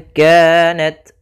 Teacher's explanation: Ikhfa itu membaca di antara izhar dan membaca di antara idgham, sehingga kita samarkan saja nunnya kepada makhraj daripada kaf. Maka bukan ingka, tapi dia ingka, langsung ke huruf kafnya.